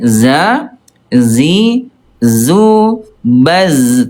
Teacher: Nah kalau zai enggak ada udara dia. Za zi zu baz tidak ada udara ya.